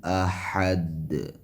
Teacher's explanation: کفوان واو کے اوپر تنوین ہے اور تنوین کے بعد حروف حلقیہ میں سے حمزہ ہے، لہٰذا یہاں اظہار ہوگا، تنوین کا اظہار ہوگا. کفوان احد دال پہ قلقلہ ہوگا